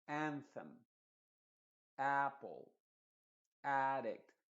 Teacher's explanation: Yo estoy enfatizando la primera y la segunda no se enfatiza tanto